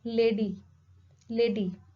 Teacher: alveolar plosive sound as in the d in lady